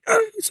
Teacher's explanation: what is called a glottal onset or glottic onset where everything just squeezes together real quick